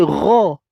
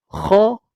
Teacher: Ni jahar dengan hams. Maka jadilah bunyi kha dengan gha. Kha ni nafas akan terlepas.